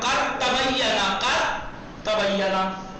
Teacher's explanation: دال نہیں پڑھا جا رہا, دال نہیں پڑھا جائے گا. کر تبینا تو دال کو تے میں ادغام کیا.